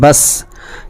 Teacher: اس کی آواز اس کے مخرج سے ٹکر کھا کر الگ نہیں ہوگی، بلکہ جیسے ہم سین کو نکالیں گے تو آواز وہیں رک جائے گی